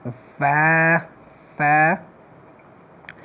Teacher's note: مخرج نمبر 15 فا ادا کیږي د لاندې شونډې د خېټې او د بره مخامخ دوو غاښونو د سرونو نه. د لاندې شونډې د پسته طرف چې دی خېټه په دې باندې دوه غاښونه به داسې کېدی فا فا.